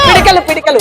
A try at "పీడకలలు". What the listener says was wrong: అది పిడకలు కాదు నాన్న, పీడకలలు.